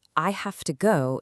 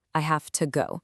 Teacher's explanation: In the sentence, I have to go, it sounds like ta